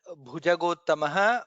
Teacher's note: Bha is Mahaprana there.